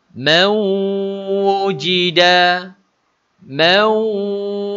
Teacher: Nun mati dimasukkan ke dalam, bunyi huruf nun dimasukkan ke dalam huruf waw. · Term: Idgham ma'al gunnah